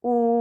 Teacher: भी मुं और हलक के खाली हिस्से से अदा होता है इसकी अदायगी के लिए जबान का पिछला हिस्सा थोड़ा सा बुलंद होता है और दोनों होठ गोल होकर आगे की तरफ निकलते हैं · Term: वाव मद्दा